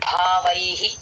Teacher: వ plus ఐ భవై లో భ కి మహాప్రాణం దీర్ఘం భవైహి విసర్గ హి అవుతుంది. వ ప్లస్ ఐ వైహి అక్కడ హి